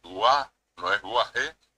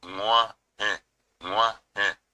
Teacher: hay una consonante anterior que es la G nasal, la G de Nguaje.